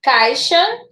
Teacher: Em caixa, primeiro veio a vogal, depois a semivogal. Da mais forte foi para mais fraca, ditongo decrescente